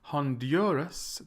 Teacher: the stresses in the middle